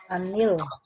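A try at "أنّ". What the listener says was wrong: Ini bukan an tapi anna. Anna itu ada tasdidnya, itu harfu taukid, bukan harfu jazmin. Annal.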